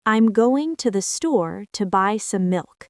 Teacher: The content words, going, store, buy, and milk are stressed. The function words, I'm, to the, some are reduced. This creates English's natural rhythm. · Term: stress-timed rhythm